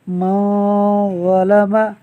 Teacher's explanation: یہاں نون ساکن کے بعد ظا حروف اخفاء میں سے ہے، لہٰذا اخفاء کا قاعدہ ہوگا یعنی نون ساکن میں غنہ ہوگا۔